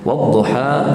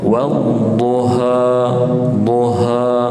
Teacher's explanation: ha pedas. Jangan ada yang buat ha tebal.